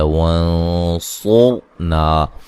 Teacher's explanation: نون ساکن کا موٹا اخفا ہے ، قوف کو موٹا ادا کریں گے، الف مدہ ہے، لو